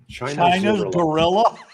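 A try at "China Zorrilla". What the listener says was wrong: No, Zorilla. It's spelled like gorilla, but with a Z.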